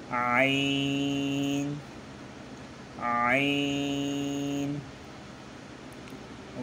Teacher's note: হলকের মধ্যখান হইতে আপনার হা আর আইন, এই দুটো হরফ উচ্চারণ হয়